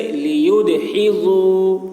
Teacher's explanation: دال میں قلقلہ، یعنی دال کی آواز ڈبل نکلے گی